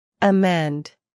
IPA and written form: əˈmɛnd (amend)